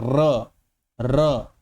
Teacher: जब हम र बोलते हैं ना तो हमारी जीभ में बहुत ज्यादा कंपन वाइब्रेशन होता है। आप बोल के देखिए र तो हमारी जीभ देखिए कैसे वाइब्रेट कर रही है। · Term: प्रकंपित